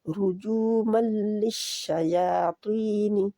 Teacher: नी को खींचना नहीं है, नी नहीं करना